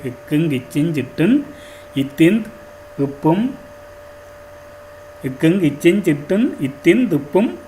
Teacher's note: இந்த 18 மெய்யெழுத்துக்களுக்கும் உரிய மாத்திரையின் அளவு அரை மாத்திரை அதாவது இவைக்குரிய மாத்திரையின் அளவு வந்து அரை மாத்திரை அரை மாத்திரை என்று சொல்லப்படும்